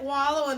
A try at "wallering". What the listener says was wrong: Wallering. wallering. There's no G on. There's no G on the end of it. It's wallering.